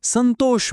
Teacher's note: દાખલા તરીકે સંતોષ બોલી જુઓ. સનો અવાજ નાકમાંથી આવે છે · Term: અનુસ્વાર